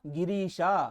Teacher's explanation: ಸಂಧಿ ಆದಾಗ ಈ ಎಂಬ ದೀರ್ಘ ಸ್ವರ ಬರ್ತಾ ಇದೆ